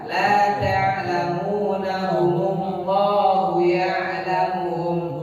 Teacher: Alifnya hilang, mim sukunnya jadi dumah.